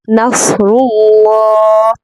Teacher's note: ठीक है, इज़ा जा, नून सॉद ज़बर नफ, रॉ लाम पेश रू, लाम खड़ा ज़बर ला, नफ़रुल्लाह। यहाँ पर आपने सौद को भी पुर पढ़ना है और रॉ को भी पुर पढ़ना है और अल्लाह में जो लाम है उसको भी पुर पढ़ना है।